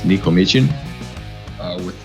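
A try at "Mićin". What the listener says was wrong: With the soft ch.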